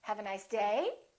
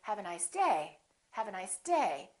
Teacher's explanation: I'm still going to emphasize the word day, but I'm not going to make my pitch go up. I'm not going to say, have a nice day. · So my voice is still going down even though I'm stressing the word. The pitch is still down.